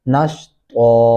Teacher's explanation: نون زبر شین نش، طا دو زبر الف طن، نش طن، اور وقف کرتے ہوئے یہاں پہ آپ پڑھنا ہے نش طا، اور یہ بھی دھیان رکھنا ہے کہ نش تن نہیں پڑھنا اس کو، یہاں پہ تا ایڈ نہیں کرنا ورنہ یہ غلطی تصور کی جائے گی